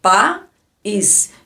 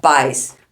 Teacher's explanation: o A é uma vogal e o I também é uma vogal. Não há semivogal.